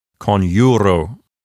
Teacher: So the fact that it contains a long vowel makes that entire syllable a long syllable. So the penult is a long syllable, and it will keep the accent for itself. And the word sounds like conjuro.